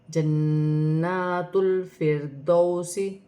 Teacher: را ساکن ہے، را ساکن سے پہلے زیر ہے تو را باریک پڑھی جائے گی